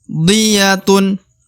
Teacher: ro dibaca 2 harokat karena terdapat alif di depan huruf ro ya.